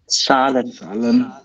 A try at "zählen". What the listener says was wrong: It's Zählen, it's A umlaut, okay?